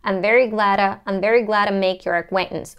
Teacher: So when we connect, when we link glad to, we get the flap T. I'm very glad to make your acquaintance.